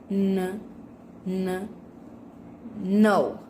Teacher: With manner of articulation, nasal, and place of articulation, alveolar.